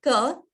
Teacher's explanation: Alpaprana, we don't need much air when we say that word.